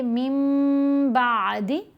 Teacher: جب نون ساکن یا تنوین کے بعد حرف با آ جائے تو ہم نے نون کی آواز کو میم کی آواز میں بدل کر پڑھنا ہے. پڑھیں گے من بعد, ساتھ گنہ بھی کریں گے. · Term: اقلاب